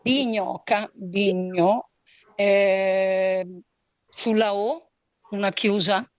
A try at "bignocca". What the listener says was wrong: Non ho detto bignoca, ho detto bignocca. Sulla O aperta. Tronca, piana o sdrucciola? Una piana, brava, una penultima. Piana.